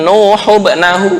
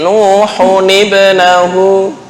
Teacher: Ketika bertemu dengan hamzah wasol, maka hamzah wasol seolah-olah ada nun kecil di bawah. Itu sebenarnya bukan nun kecil, tapi untuk meringankan nun sukun nih, karena sama-sama mati, diberikan harokat kasroh untuk meringankan bacaan.